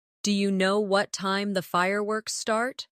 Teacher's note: Do you? Sounds like dia in fast speech.